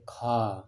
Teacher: बहुत ज़्यादा हवा निकल रही है ना मुंह से, तो महाप्राण